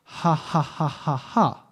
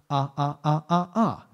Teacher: when we say the vowel sound ah, we're actually putting a little glottal stop on.